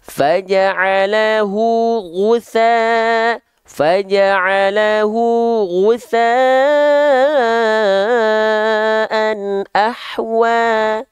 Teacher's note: Jadi kalau kita ibaratkan ini lidah, huruf ghoin itu lidah terdalamnya naik ke atas. Jadi bukan terhampar, tapi suaranya tebal. · ghoin dilafalkan dengan lemah, ya, dan tidak mengalir nafasnya. · Dan jangan lupa huruf ghoin diangkat pangkal lidahnya. Ya, diangkat pangkal lidahnya begini.